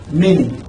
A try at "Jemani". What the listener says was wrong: It's not even like you're not supposed to pronounce. Like it's not like Manny. It's like